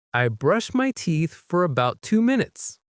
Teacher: the T in about often disappears in fast speech, so it sounds like about to.